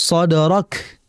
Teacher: Sehingga kita nggak boleh membaca sadrak. Nggak boleh mengalir. Akan tapi langsung diputus sadrak. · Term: syiddah